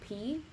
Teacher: so now say for instance you're saying the letter P right if you if you just put your hand in front of your mouth and go P you'll feel a little bit of air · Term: aspirated consonant